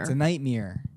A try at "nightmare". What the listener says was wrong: You're saying nightmare. It's nightmare. M-A-R-E. You're saying like M-E-R-E.